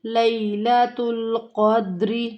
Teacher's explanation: لیلۃ لے کی آواز نہیں آنی چاہیے